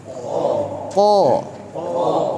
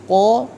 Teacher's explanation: Qa. Huruf qaf itu memiliki ketebalan ya, tidak tipis. Qa tebal karena dia termasuk huruf isti'la juga.